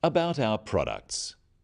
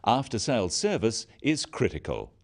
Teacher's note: Note the downward intonation at the end of sentences.